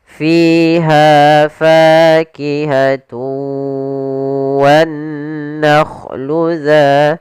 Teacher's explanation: Yang pertama pada lafal fi, yaitu adanya kasrah bertemu dengan ya, kita panjangkan 2 harakat fi-nya. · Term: mad tabi'i